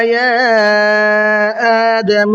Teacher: یا آدم کے اندر یہ چھوٹا مد ہے، اس کو مد منفصل کہا جاتا ہے، اس کو 1 سے 3 الف کے برابر کھینچ کر کے پڑھنا ہے